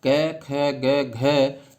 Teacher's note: क वर्ग के कौन कौन से स्पर्शी व्यंजन क, ख, ग, घ जो कंठ से उच्चारित होते हैं